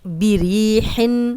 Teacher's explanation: را پہ زیر دو حرکات لمبا کریں گے